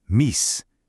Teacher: That long E sound, meese, literally moved up in the mouth and became the I sound we have in mice.